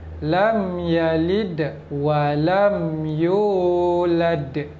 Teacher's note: mim mati ni kita sebut dengan jelas. Tak perlu dengung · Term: izhar syafawi